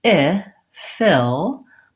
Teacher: my tongue is a little bit lower and it's a lax sound rather than a tense sound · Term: lax I vowel